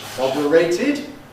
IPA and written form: ˈmɒdəreɪtɪd (moderated)